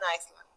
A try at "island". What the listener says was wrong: Just be careful. Just be careful. It is island, okay? Island. La S no la decimos. Porque si decimos Iceland con la S, estamos diciendo el país.